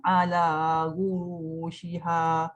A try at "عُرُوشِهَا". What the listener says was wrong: Ala urushiha. Ala uru ain. Bukan guru. Uru.